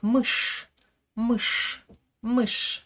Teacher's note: Le son ch est toujours dur en russe, il est jamais mouillé.